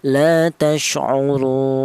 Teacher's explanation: Yang pertama boleh dibaca tul. Tul itu artinya panjang. yaitu panjangnya tiga alif atau enam harakat atau enam ketukan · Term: mad arid sukun